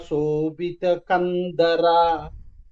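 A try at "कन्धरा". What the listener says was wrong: So there is Mahaprana over there. So it is Kandhara. So there is a Mahaprana over there.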